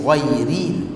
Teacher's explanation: Ra itu dibaca dengan nipis, tak boleh dibaca tebal. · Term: ra yang dibaca dengan nipis